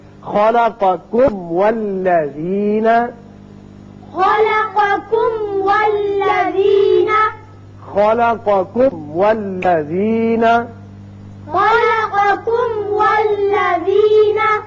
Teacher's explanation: یہ آپ کو چند مثالیں سمجھا دیں کہ میم اور با کو چھوڑ کر باقی جتنے 26 حروف ہیں جب میم ساکن کے بعد آ جائیں تو میم کا اظہار ہوگا، میم کو آپ اچھی طرح مخرج سے ادا کر کے آگے نکل جائیں گے، ٹھہریں گے نہیں · میم کا اچھی طرح اظہار کیجئے، پھر واو پر ہونٹ کو گول کیجئے، اس لیے واو ادا ہوگا۔